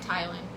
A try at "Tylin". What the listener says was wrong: That's Teelan. The Y is silent when you spell it like that. Teelan. Teelan. That's Teelan. Teelan. That's Teelan.